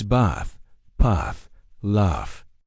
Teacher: In southern British English, we use a long open ah sound. Think of the sound you make when the doctor asks you to open your mouth and say, "Ah." So, it's bath, path, laugh.